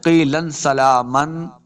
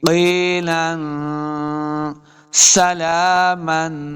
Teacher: حروف اخفاء سے ہے، حروف اخفاء سے سین آ گیا تو یہاں پہ اخفاء کا قاعدہ یعنی غنہ کرنا ہے